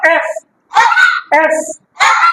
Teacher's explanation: ই এফ এফ কে দুই ঠোঁট বন্ধ করা যাবে না এফ upper teeth and lower lip place of articulation উপরের দাঁত এবং নিচে ঠোঁট বলো এফ এফ বাতাস বের হয়ে যাবে এফ এফ ফ্যান ফ্যান